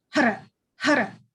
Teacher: It's spelled Har, but you're hitting your tongue on the tip of your roof of your mouth. So it's hara, hara, almost like you're rolling an R if you're speaking Spanish, for example.